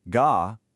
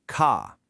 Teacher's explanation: The unaspirated ga versus the aspirated ca.